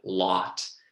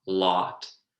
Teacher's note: my O is almost being more of an ah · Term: unrounded vowel